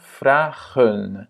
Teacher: À nouveau, on a voyelle, consonne, voyelle. Donc, du coup, le premier A est long